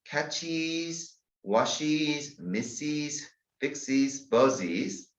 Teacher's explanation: Final ES is pronounced is, us, which means another syllable.